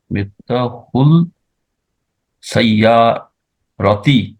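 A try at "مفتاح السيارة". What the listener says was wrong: মিফতাহুল হবে না, মিফতাহুস সাইয়ারাতি। কেন? জি, সিন হলো আল হুরুফ শামসিয়া থেকে একটি হরফ, কেমন? একটি হরফ হলো কি? সিন। সেই জন্য সিনের উপর তাশদীদ দিয়ে পড়তে হবে। আল হুরুফ শামসিয়া গুলো তাশদীদ দিয়ে পড়তে হয়।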